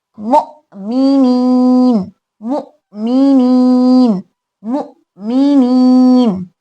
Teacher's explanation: मु हमजा में झटका क्योंकि सिफत शिद्दा है, शिद्दा में आवाज जब मखरज में रोकते हैं तो झटका पैदा होता है।